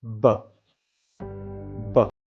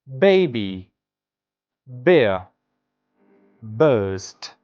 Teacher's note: Plosive sounds are produced when the air allowed to come into the mouth, the air the air flow is then completely blocked. Pressure builds up and then finally the air is released with a slight burst or puff. That sudden release of the air creates a plosive effect. · b sound, is a voiced bilabial plosive. That means that both lips come together, the air pressure builds up and your vocal cords vibrate.